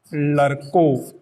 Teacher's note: ब्रज भाषा में ड को र के रूप में बोला जाता है। ड़ जो है उच्छिप्त ध्वनि, उसका उच्चारण र के रूप में होता है।